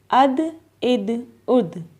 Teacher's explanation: حروف قلقلہ میں سے آ رہی ہے دال، تو اس لیے ہم نے اس کو بھی قلقلہ کرنا ہے، یعنی کہ ہلا کے پڑھنا ہے۔